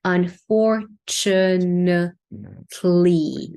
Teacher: a lot of the vowels are reduced into a schwa